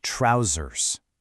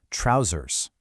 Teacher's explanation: In the UK, you get that softer ending, trousers. But if you hop over to the US, you hear that harder R sound